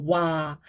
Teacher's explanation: 이 오, 아는 이 반모음 오에서 아로 빠르게 발음하면서 와. 빠르게 발음하면서 내는 이중모음이란 말이에요.